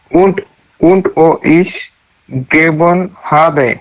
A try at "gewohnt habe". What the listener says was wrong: Don't miss this T. gewohnt habe नहीं है, gewohnt habe है ये.